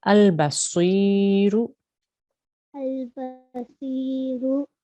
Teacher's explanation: Sod is a thick sound. So we need to make a round mouth. Even though it's got a kasra underneath, we still need to make our mouth round in order to make that thick, heavy sound.